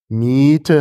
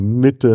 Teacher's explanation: Wenn Sie Miete haben, haben Sie ein geschlossenes I. Und wenn Sie Mitte haben, haben Sie ein fast geschlossenes I.